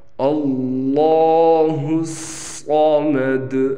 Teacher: اکثر لوگ یہ صاد کو موٹا نہیں کرتے جس سے یہ سین بن جاتا ہے، جو کہ میں نے سیٹی والے حروف میں اس کی نشاندہی کی ہے۔